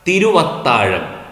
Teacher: തിരു പ്ലസ് അത്താഴം തിരുവത്താഴം അവിടെ തിരുവത്താഴത്തിലെ വ ചേരുന്നതിനു മുമപ് അവിടെ ഇല്ല തിരുവിലും അതിലെ അത്താഴത്തിലും വ ഇല്ലല്ലോ പക്ഷേ ചേരുമ്പോൾ തിരുവത്താഴം എന്ന ഒരു വ കൂടി വരുന്നു അതിനെയാണ് ഇങ്ങനെ ചേരുമ്പോൾ പുതിയൊരു വർണ്ണം പുതുതായി വന്നു ചേരുന്നതിനെയാണ് ആഗമസന്ധി എന്ന് പറയുന്നത്